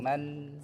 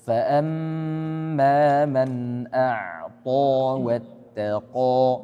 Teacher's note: N-nya harus jelas, ditekan dulu.